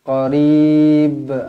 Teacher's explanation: Kita berhentikan dia, kita waqafkan dia. Jadi kena baca melantun qarib. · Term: Qalqalah kubra